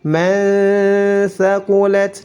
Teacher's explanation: tidak boleh dibaca man karena dihukumi ikhfa, disamarkan nun sukunnya. Man thaqulat, huruf ta memiliki sifat hams dan sifat syiddah.